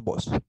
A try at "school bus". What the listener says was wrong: the pronunciation is uh bus uh uh bus because if you say boss you're saying Jefe